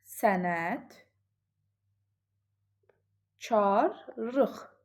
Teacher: Sənət karlıq şəklində tələffüz olunur. Yəni l r-ya, q da x-ya keçir.